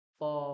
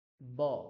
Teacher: দুটো ঠোঁট সেখানে একসঙ্গে হবে, উপর এবং নিচের যে উত্তরোষ্ঠ এবং অধরোষ্ঠ। উত্তরোষ্ঠ মানে হচ্ছে উপরের যে ঠোঁট, আর অধরোষ্ঠ মানে আমাদের নিচের যে ঠোঁট। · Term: ওষ্ঠ বর্ণ